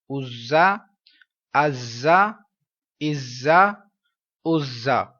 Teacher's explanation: صفیریہ کا مطلب یہاں پر اس حرف کو پڑھنے سے پہلے سیٹی کی، تیز سیٹی کی آواز آنی چاہیے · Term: حروف صفیریہ